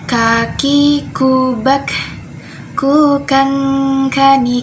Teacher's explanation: makhraj huruf Kaf itu ada di Pangkal lidah ke langit-langit bagian bawah Ko Jadi dia sifatnya hamesh Hamas itu mengalir nafasnya contohnya kakiku